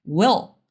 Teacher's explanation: esse L faz com que o som desse I fique mais grave, porque a gente abre espaço na boca e as coisas ficam mais graves. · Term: som do L